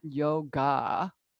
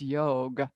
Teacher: there's a short a at the end it's not a long a